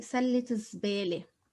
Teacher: we vocalize the ta because we have a word after. But normally if it's on its own, سلة, I'm not going to pronounce the ta, but I have another word after.